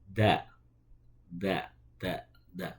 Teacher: Ujung lidah bertemu dengan pangkal gigi seri atas. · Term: dal